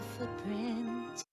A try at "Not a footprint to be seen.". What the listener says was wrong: Not a footprint to be seen. Not a footprint. There's no T. This is pausing. We don't say a strong T. It's difficult to say, and it's really doesn't sound very nice. It's hard to sound quickly when you have to pronounce every T. Not a footprint.